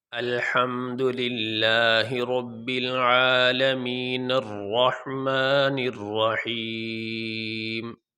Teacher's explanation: یہ عالمین کا جو نون ہے، اس نون کو اس را کے ساتھ ملائیں گے